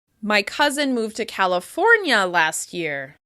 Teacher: I might stress California if I'm answering a question, like, where did your cousin move to?